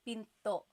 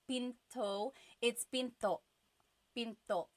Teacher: Do you hear the glottal stop when I say pinto?